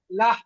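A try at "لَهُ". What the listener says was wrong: মাশাআল্লাহ, খুব সুন্দর হয়েছে।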